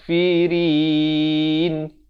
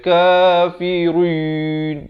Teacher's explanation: ra ni baris kasrah dibaca dengan nipis. Bukan tebal. Jangan baca kafirin.